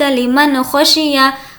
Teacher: ذالک لمن خشیہ لمن یہاں پر اظہار کر کے پڑھیں گے کیونکہ حمزہ ہا عین ہا غین خا یہ 6 لیٹرز جو ہے وہ حروف حلقی میں سے ہیں تو یہ 6 میں سے کوئی بھی لیٹر اگر تنوین یا نون ساکن کے بعد آئے تو بالکل نارمل نون ساکن کی آواز کو ظاہر کر کے پڑھیں گے